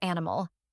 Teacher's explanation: here we have the anti penultimate rule so the stress falls on the first syllable